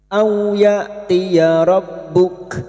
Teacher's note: 5 harokat kita panjangkan. Awya fathah bertemu waw sukun kita lunakkan.